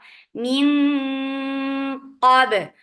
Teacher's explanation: For fatha open jaws attached with ba. Ba will get sifa qalqala and ba will be light. Because of qaf, don't make ba heavy.